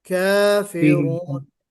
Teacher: मद्दे तबई 2 हरकत के बराबर इसको खींचिए